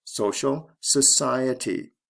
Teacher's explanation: Stress goes from the first to the second syllable.